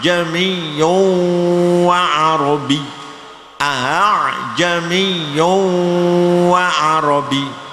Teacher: Membaca hamzah dibaca antara hamzah dan alif. Hamzah yang kedua dari lafal a ya, itu dibaca antara hamzah dan alif. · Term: tashil